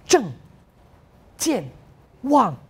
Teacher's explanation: 我们的去声就是大部分我们国语的第四声，比较有力的、很响亮的一个声音